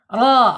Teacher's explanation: Ro terbaca tebal karena harakatnya fathah ya. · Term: Tafhim tebal